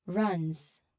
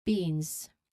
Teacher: Make sure that the final Z sound is voiced and clear. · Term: buzzing sound